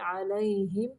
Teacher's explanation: یہاں پہ میم کو ظاہر کریں گے، علیہم یعنی لمبا نہیں